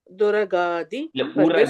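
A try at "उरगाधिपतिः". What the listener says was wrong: Uragadi. you're again saying do. It is, you say it as u.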